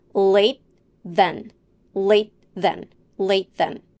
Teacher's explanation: The word late would be pronounced with a stop T sound in this phrase because it is followed by a consonant sound, and if you say it in a natural way using connected speech. You put your tongue into the position for the T sound, but you don't release it. Instead, you go into the voiced TH sound.